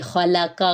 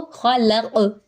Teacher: خلق، خا اور قاف پر ہے یعنی موٹے ہیں، ان دونوں کے درمیان میں لام جو ہے وہ باریک ہے، تو اس لیے اس چیز کا خیال رکھنا ہے، جو حرف موٹا ہے اس کو موٹا پڑھے، جو باریک ہے اس کو باریک پڑھے۔ اس کے ساتھ ہی قاف پہ کلکلا کریں گے